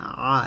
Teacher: আইনটা চাপ দিয়ে বলতে হবে, আ এরকম। আইন জবর আ, শিন জবর শা, আশা, র জবর র, আশা র।